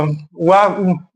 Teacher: वकार से दंतोष्ठम अर्थात दांत और ओष्ठ दोनों का प्रयोग करना होता है, वो वा वर्ण होता है।